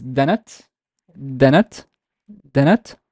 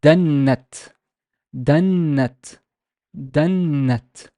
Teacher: Notice how the noon is longer.